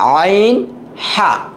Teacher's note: আইন আর হা, এই 2টা হরফ হলকের মাঝখান থেকে উচ্চারণ হয়